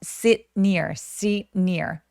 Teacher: 그러면 마치 sit near 이런 식으로 t를 발음하듯 혀는 갖다 대는데 sit라고 소리를 내지 않고 혀만 갖다 대고 끝나는 느낌이 들어요. 그래서 어떤 느낌이냐면 소리가 약간 끊기는 듯한 느낌이라고 해야 될까요?